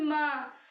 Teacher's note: हैं हमारे नासिका से निकलते हैं जैसे हम बोलेंगे म तो जब हम म बोलेंगे तो हमारी नासिका से भी नाक से भी हमारी वायु प्रवाहित होगी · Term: नासिका वण